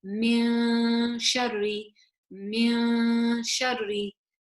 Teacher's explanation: So again, it should be like min shari. My tongue is flat. I'm not lifting it up towards the noon. I'm just saying it as min shari, min shari.